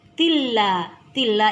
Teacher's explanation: Tilla inilah idgham bila gunnah, yaitu bacaan harus dibacanya tidak dengung atau tanpa dengung, langsung dileburkan di huruf lam. Tilla, la 2 harakat saja, ada mad tabi'i.